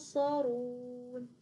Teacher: الصاد الا بعد ان ينتهي الزمن الغنه الكامله سانتقل الان ينصرون لاحظوا ان صوت الغنه مفخم لان الصاد مفخمه ايضا تاثرت به ايضا صب الذي سيمر من الفم قليل لكن · لاحظوا أن صوت الغنة مفخم لأن الصاد مفخمة أيضا تأثرت به. أيضا صوت الذي سيمر من الفم قليل، لكن الصوت الأقوى سيكون من الخيشوم.